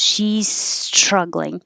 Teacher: she's holding the s creating a lot of air flow my tongue is up for this s